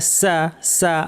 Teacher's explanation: সা পাতলা, সদ ভারী, একই জায়গা থেকে 2টা উচ্চারণ হয়। জিহ্বার শীর্ষটা নিচে পাটের দাঁতের গোড়ায় লাগিয়ে উচ্চারিত হয়। সিন এবং সদ 2টাই, কিন্তু সিনটা পাতলা।